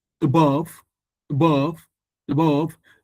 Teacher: It looks like I'm not even pronouncing the ah